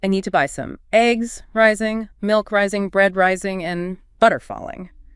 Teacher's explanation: You rise on each item to show the list is still going. I need to buy some eggs, rising, milk, rising, bread, rising, and butter, falling.